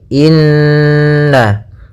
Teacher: adanya Nun berharakat tasydid ya maka cara membacanya adalah kita tahan dulu ghunahnya · kita tahan dulu gunnahnya inna, baru kita baca na